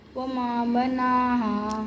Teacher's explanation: الف مدہ کھینچنا ہے، مقدار پوری کرنی ہے. بس وما بناها وما بناها نہ اس سے کم نہ زیادہ.